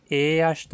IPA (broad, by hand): eːɐʃt